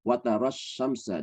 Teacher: hamzah wasal ketemu tasdid langsung masuk tasdidnya